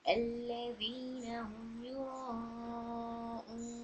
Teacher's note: मद आरिस की वजह से 2 to 4 काउंट्स दे रही हूँ।